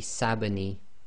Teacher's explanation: We've got the sa sound, so the sa will join to the ba, which is sakin, so that would be sabani.